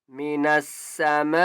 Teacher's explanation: می نس، س، میم الف مز زبر ما، بڑی مد ہے، میم کو 5 الف کی مقدار کھینچ کر پڑھیں گے